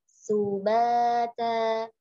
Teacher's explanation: sinnya jangan sampai pokoknya terbaca tebal ya, ya, tapi tipiskan dia. Bisa dari posisi kita tersenyum, kemudian baru ditomahkan.